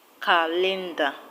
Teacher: calendar is a noun, so the stress will go to the first syllable